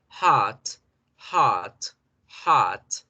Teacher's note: Al alargar la vocal también hago la diferencia. Entonces podemos ver que en americano lo hacemos con la A larga